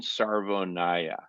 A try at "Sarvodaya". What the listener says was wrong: It's a D, not an N.